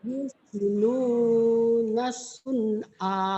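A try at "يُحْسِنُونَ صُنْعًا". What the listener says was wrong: Jangan Yusinunas. Kalau Yusinunas berarti di sini ada tasdid, berarti diidgomkan dan ini bukan idgom. Kalau tanwin ketemu shad harusnya ikhfa. Ini bukan nas tapi yuhsinuna sun'a.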